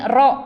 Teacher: diucapkan Zal ini ro kalau kita R ya sama ini ya Ada sifat takrir bergetar